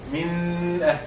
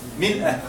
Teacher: If a noon sakina or a tanween is followed by any of these 6 throat letters, the noon sakin or tanween is pronounced clearly from its respective origination without ghunna